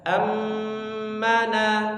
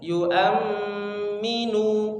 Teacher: diberi atau dibaca dengan gunnah mukammilah ya, gunnah yang disempurnakan ya, panjang